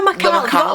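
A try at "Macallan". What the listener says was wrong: Macallum. There's an N, it's not an M.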